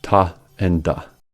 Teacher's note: Ta and da are alveolar plosives since the sounds are produced at the alveolar ridge. Ta is unvoiced and is the counterpart to the voiced da.